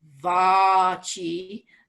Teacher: the - underneath is telling us to go down in pitch but the horizontal line over the vowel is telling us it's a long ah sound